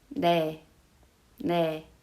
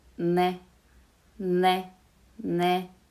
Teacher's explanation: The biggest difference is niun is less nasalized than N. So when you pronounce this, ne, ne, ne, I can clearly feel the vibration.